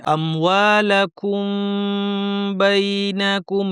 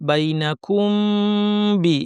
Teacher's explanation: মিমের গুন্নাটা লম্বা করে দিতে হবে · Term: মিম সাকিনের ইফা